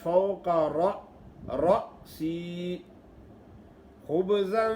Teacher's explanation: اکثر لوگ حمزہ جب ساکن ہوتا ہے تو اس کو صحیح نہیں پڑھتے، حمزے کے بجائے الف ہی پڑھ لیتے ہیں، فوق راسی پڑھ لیتے ہیں، راسی را الف را پڑھ لیتے ہیں، راسی نہیں ہوتا، جھٹکا دینا ہے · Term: حمزہ ساکن